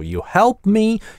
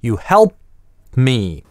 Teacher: Опять в прошедшем времени ритмика другая, вот это /t/ выпадающее, оно как бы подразумевается и оставляет маленькую паузу